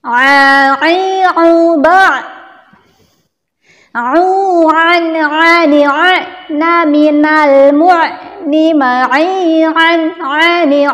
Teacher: huruf ain itu keluarnya dari tengah tenggorokan